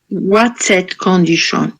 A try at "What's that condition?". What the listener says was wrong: Okay, good. Thank you.